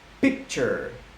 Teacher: I'm using both of my lips, but there's no vibration up in here, which means there is a voiceless sound.